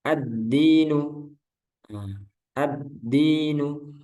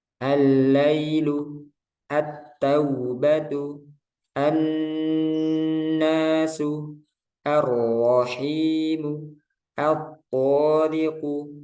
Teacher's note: Jadi alnya nggak dibaca, nggak jelas, nggak dibaca gitu ya. Jadi langsung ke huruf syamsiyahnya.